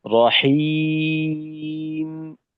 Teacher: মিমে একটু সময় দেবো, যাওয়ার সাথে সাথে আমাদের আওয়াজটা বন্ধ হয়ে যাবে না।